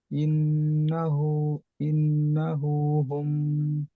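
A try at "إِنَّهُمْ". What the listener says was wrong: ইন্না। হ্যাঁ, ইন্না হু নেই, ইন্না হুম, হা মিম পেশ হুম, ইন্না হুম।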